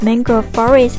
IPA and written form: ˈmæŋ.ɡrəʊv ˈfɒr.ɪst (mangrove forest)